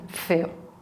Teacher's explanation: Then we have the labiodental. That's the F, like in feo.